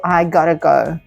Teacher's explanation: in very informal and fast speech so you might notice that the T sound becomes softer and often actually really sounds like a d